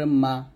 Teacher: মিমটা দুই ঠোঁটের শুকনা অংশ থেকে মিলায় উচ্চারণ করব